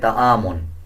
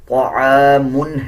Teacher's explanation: اسی طرح کہ اس میم پہ بھی غنہ نہیں ہوگا، طا کو پر یعنی موٹا پڑھا جائے گا، طا موٹے حروف میں سے آتا ہے۔ عین کا مخرج صحیح ادا کیا جائے گا، اکثر لوگ اس کو پڑھ دیتے ہیں تعامن، تعامن نہیں ہے بلکہ طعامن ہے۔